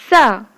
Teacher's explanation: स बोलते समय जीभ दंत मूल के पास चली जाती है।